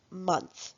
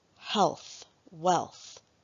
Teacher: concentrating on the voiceless th sound at the end of words in the final position